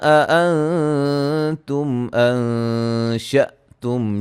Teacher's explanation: حمزہ کو جھٹکے سے ادا کریں گے